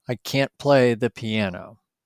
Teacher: you can hear the strong vowel sound on can't, but the T is a little soft